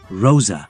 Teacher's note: The voiced alveolar fricative sound of S in Rosa.